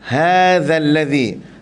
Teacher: Hadza tu mat tabi'i ataupun mat asli. Qadar dia 2 harakat, jangan lebih.